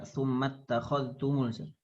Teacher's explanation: Membaca dengan idgham kamil. Idgham kamil, za ke ta.